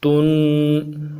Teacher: تن تنوین ہے، غنہ کریں گے، غنے کو ایک الف مدار میں لمبا کریں گے۔